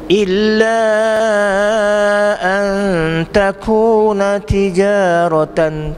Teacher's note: Antaku tu yang panjang sangat, 2 harakat je.